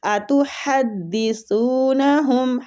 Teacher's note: اتحدثونہم ہا وسط الحلق سے ادا ہوگا، سا نرمی والا، زبان کی ٹپ تھوڑی سی دانتوں کے درمیان میں باہر آئے گی